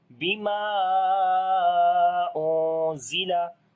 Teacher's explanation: After the alif madda, hamza is coming in the beginning of the next word. That's why this is called madde munfasil, which we long 2 to 3 alif. So we say bima unzila.